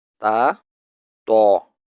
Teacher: The tip of the tongue touches the upper gum line, just behind the two top incisors. This is the articulation point of both ta and to.